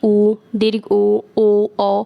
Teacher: पर स्वरों का वर्गीकरण करें तो वो है वृतिका वृत्तिकर स्वर इनके उच्चारण में होठों का जो आकर है वह गोल हो जाता है